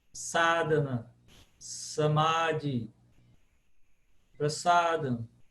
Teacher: mesmo que ele apareça entre duas vogais ele continua com som de s · todos eles com som de s nunca Z